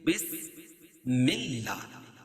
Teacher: یہ اللہ کا لام باریک پڑھا جائے گا